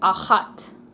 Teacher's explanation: Israel has quite a distinct sound that comes from the throat. It's kind of similar to an H, but it's not. It's a ch sound.